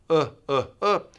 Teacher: the tip of your tongue is not as far down as the ooh that really goes down uh uh the tip of the tongue can be a little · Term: short uh